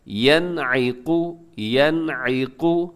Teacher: وَمَثَلُ الَّذِينَ كَفَرُوا، آگے كَمَثَلِ الَّذِي، یہاں پہ جو لکھا ہوا ہے الَّذِي، یہاں پہ یائے مدہ ہے، اسے تھوڑا سا کھینچ کے لمبا کر کے پڑھیے گا، كَمَثَلِ الَّذِي، آگے يَنْعِقُ، یہاں نون ساکن ہے اور نون ساکن کے بعد عین ہے، اب یہاں پر کیا کریں گے اظہار